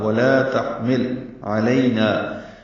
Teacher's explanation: عین وسط حلق سے نکالیں گے